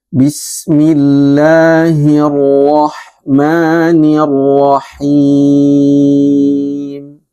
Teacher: sifat tafkhim, sifat tebal daripada huruf ro tasydid.